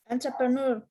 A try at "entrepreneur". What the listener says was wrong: Ner. Yeah, ner. It's like a ner. It's not u, it's not e, it's like ner. Entrepreneur. Entrepreneur. Yes, I know this is a little bit difficult word.